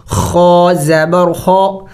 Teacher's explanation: خا بھی چونکہ موٹے حروف میں سے ہے اس کو موٹا کریں گے، اور حروف حلقے میں سے ہے جو کہ حلق کے اگلے حصے سے ادا ہوتا ہے۔